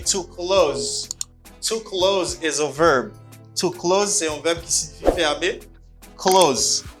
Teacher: the second has a z sound you say close and it's a verb